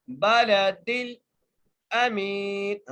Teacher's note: میم کو ایک الف کی مقدار کھینچ کے پڑھیں گے، نون کو وقف کی صورت میں ساکن کر دیں گے.